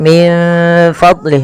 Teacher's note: menyamarkan huruf nun kepada huruf Fa